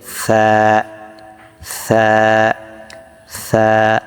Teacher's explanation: সাটা একবারে নরম হবে, জিহ্বার আগাটা সামনের দুই দাঁতের আগার সাথে লাগিয়ে দেবেন, দিয়ে সা সা সা।